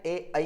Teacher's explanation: कंठ तालव्य स्वर कहते हैं जिनका उच्चारण कंठ और तालु दोनों से मिलकर होता है